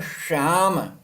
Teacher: सबसे पहले जो वर्ण है श, ये बोलते समय हमारी जीभ पूरी मुड़ जाएगी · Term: तालव्य श